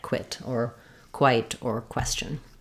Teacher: If we're talking about how to pronounce the letter Q in words, it's often together with QU, and it's usually pronounced like qua. So we have a gliding w and a k sound together